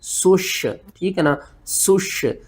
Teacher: سین کو سیٹی کے ساتھ پڑھنا ہے، شین کے اوپر آپ نے سختی کرنی ہے